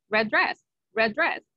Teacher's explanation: words together we say R very good red dress red dress I only say the letter d one time